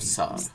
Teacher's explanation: अनुस्वार gets a half v flavor to it. Therefore, while this is sansar in Hindi, it would be samsar in Marathi.